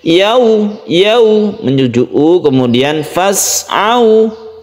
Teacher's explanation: sukun wawu sebelumnya fathah. Ini usahakan condong ke huruf u ya. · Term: mat layin